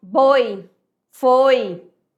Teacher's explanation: Ditongo oral, saída livre.